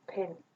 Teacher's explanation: The beginning there's a little bit of voicing, but then and then this messy bit here is the release, and then we have some distance after the release. There is a lot of noise happening before the actual vowel. Yeah, so normally we measure that in milliseconds, and that's our VOT.